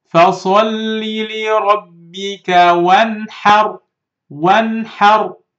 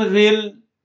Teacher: نون ساكنة, yes, followed by خا. So I should read this نون clearly without hiding or merging. And of course, no غنة. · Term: إظهار